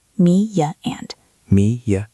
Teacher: When the first word ends in a wide lip sound, like E, A, or I, your mouth is in a smile shape. This shape naturally creates a Y sound